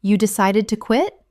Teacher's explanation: Utilizing a rising intonation, this invites them to elaborate on their reasons.